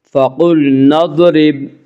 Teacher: ضاد کو پر پڑھیں گے، ضاد حروف مستعلیہ میں سے ہے۔